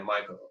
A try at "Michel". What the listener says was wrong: Oh yeah, there's no A.